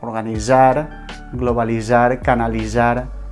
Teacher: es pronuncia com una S sonora, d'acord? Com una Z